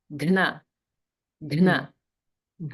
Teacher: in this word, we have a mahaprana, gha, combined with na.